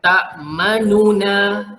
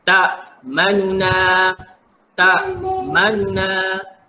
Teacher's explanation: Bila kita nak buat bunyi raum, sekejap saja bunyi baris depan tu.